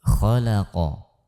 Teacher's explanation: Kemudian mampu membaca kata di dalam Al-Quran dengan fasih, karena ketika kita mampu membaca satu kata dengan fasih, misalkan kata khalaqa, di mana pada susunan huruf tersebut adalah diawali dengan huruf tebal, tipis, kemudian tebal